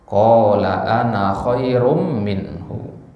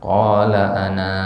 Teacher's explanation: Ya, fungsi dari tanda lonjong ini adalah kalau kita baca wasol, maka ana ini dibaca pendek